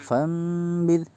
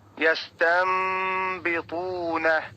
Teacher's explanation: Nun matinya diganti dengan mim. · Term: iqlab